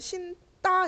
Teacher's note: 그러면은 니은이 있는 규정은 여기서 어간 받침 니은 미음이잖아. 그러면 아 얘는 어간 받침 니은이라서 된 소리가 일어났군